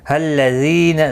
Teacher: زی یا مدہ ہے، 1 الف کی مقدار کے برابر کھینچ کر پڑھیں گے